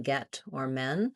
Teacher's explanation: you should be thinking that lax front vowel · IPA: ɛ